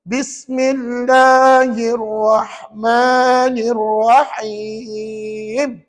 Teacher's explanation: Walaupun ada 3 hamzah wasal pada ayat ini, tuan-tuan sedar tak? Ketiga-tiga hamzah wasal tadi tak dibaca pun.